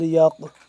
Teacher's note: یہ قاف موٹا پڑا جائے گا، نقطے والا قاف ہے، موٹا ہے